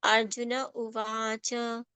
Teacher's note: Na and cha have to be complete, they should not become half.